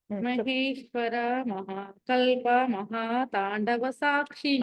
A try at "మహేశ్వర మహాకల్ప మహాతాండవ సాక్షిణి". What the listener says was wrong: అన్ని చోట్ల దీర్ఘం తీయకూడదు. ఎక్కడ బ్రేక్ చేస్తున్నారో అక్కడ దీర్ఘం తీయకూడదు.